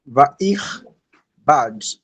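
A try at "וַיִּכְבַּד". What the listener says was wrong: Give the yud it's ya, vayich bad.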